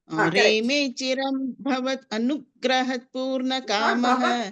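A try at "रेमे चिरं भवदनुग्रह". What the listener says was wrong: Anu, don't say. Don't say bhavad and anu. Don't split it. Reme chiram bhavadanugraha. Give that pressure on no.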